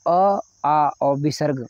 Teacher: तो अ, आ और विसर्ग, इनका उच्चारण स्थान है कंठ से